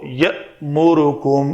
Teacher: حمزہ جب بھی ساکن آئے تو جھٹکے سے ادا کرتے ہیں۔ جھٹکا یہ ہے کہ جب آپ جھٹکا دے رہے ہوں تو پیٹ کے اس حصے میں آپ کو حرکت محسوس ہو۔